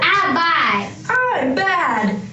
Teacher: you get to hear some of the nasal emission and the weak pressure consonants